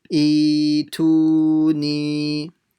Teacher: Making sure you stretch them all the same amount, so one shouldn't be longer than the other.